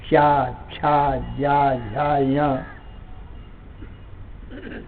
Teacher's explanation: जीवा तालू में ठोकर मार करके और फिर शब्द निकलता है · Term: चवर्ग